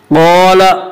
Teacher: قال، الف مدہ، الف ہمیشہ مدہ ہوتا ہے، الف سے پہلے زبر ہوتا ہے، الف مدہ کو ایک الف کے برابر کھینچ کر پڑھیں گے